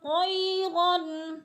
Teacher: طا موٹے حروف میں سے ہے اور یا مدہ، یا ساکن سے پہلے طا کے اوپر زبر ہے تو یا مدہ کو ایک الف کے برابر کھینچ کر پڑھنا ہے۔